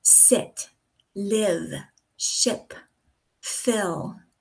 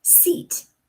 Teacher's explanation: instead of the soft I their tongue pronounces a hard E. So instead of sit you say seat. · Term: short I sound